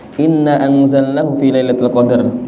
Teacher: Inna panjang mad jaiz munfasil. Na hamzahnya itu yang jelas.